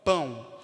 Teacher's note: percebe que o pão tem o a nasal e este o também tá saindo um pouco mais fraco que